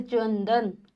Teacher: इस बिंदु में हल्का-हल्का आपको न की ध्वनि सुनाई देंगी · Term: अनुस्वार